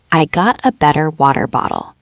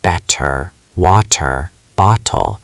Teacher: The T between two vowel sounds or after an R turns into a fast light D-like tap. This is called the alveolar flap.